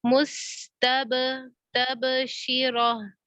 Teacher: बा साकिन है, और यहाँ पे हम कलकला कर रहे हैं। क्यों कलकला कर रहे हैं?